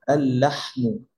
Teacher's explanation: আচ্ছা, লাম দিয়ে যদি কোনো শব্দ শুরু হয়, আর সেটা যদি আলিফ লাম যুক্ত করি তার সামনে, সেক্ষেত্রে কি হবে, প্রথম আলটা উচ্চারণ হবে না, দ্বিতীয় আলটা গিয়ে ডিরেক্ট ধরে ফেলবে, ইদগাম হয়ে যাবে